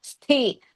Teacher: So totally Sthi is a Samyukta Akshara, but it is Hrisva and Mahaprana.